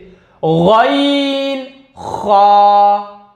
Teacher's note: हलक के ऊपर वाले हिस्से से गैन खा, यह अदा होते हैं